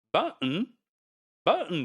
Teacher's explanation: another sound is put into it which is a glottal stop